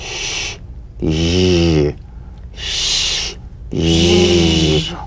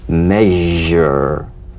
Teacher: All suggestion of the sh must vanish. Feel the sh overridden by the deep rumbling vibrations of the z resonating against the teeth and the tip of the tongue.